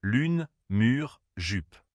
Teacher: U garde les lèvres arrondies comme pour le ou mais pousse la langue vers l'avant presque contre les dents du bas. Cela crée un son plus fermé, plus aigu.